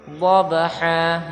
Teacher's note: Ya, ini ada qalqalah sughra ya, huruf ba, huruf qalqalah. Karena dia di tengah ayat, maka dipantulkannya dengan cara pelan saja, tidak kuat-kuat ya.